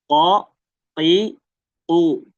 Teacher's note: jadi Qof tadi ya di pangkal bagian belakang nyentuh bagian lembut